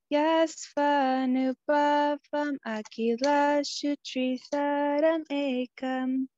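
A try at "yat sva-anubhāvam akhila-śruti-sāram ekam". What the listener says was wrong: So I think you have an R behind the T that's not actually there. And so you said shutri instead of shuti. Shuti.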